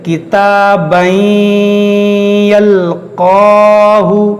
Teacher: قاف حروف مستعلیہ ہے، اس کو موٹا کریں گے اور کھینچیں گے · اس تنوین کے اندر جو نون ساکن ہے اس کو اس یا میں داخل کر کے پڑھیں گے غنہ کر کے